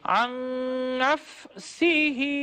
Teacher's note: اگر ہم ملا کر پڑھیں گے یعنی کنٹینیو کریں گے تو اس صورت میں ہا کی حرکت کو جو کہ کھڑی زیر کی صورت میں نظر آ رہی ہے ہم اس کو پڑھتے ہیں اور اس طرح پڑھتے ہیں عن نفسه.